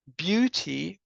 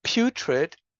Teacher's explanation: So we have beauty with a voiced Y but putrid with a voiceless Y.